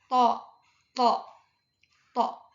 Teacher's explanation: Infijar adanya letupan ketika mengucapkan huruf to. Terus majhur dia itu bergetar.